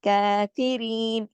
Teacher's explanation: काफ पे देखिए खड़ी जबर है, एक अलिफ के मत बराबर खींचा जाएगा